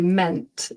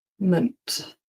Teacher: That ending there, the MENT, we don't say meant, it's always munt.